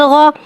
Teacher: غائن کو ایک الف یعنی 3 حرکات کے برابر کھینچ کے پڑھیں گے. غائن حرف مستعلیہ ہے, لہذا اس کی آواز حلق سے موٹی ادا ہوئے گی. غائن کے اوپر زبر ہے, زبر کو منہ کھول کے ادا کر کے پڑھیں گے.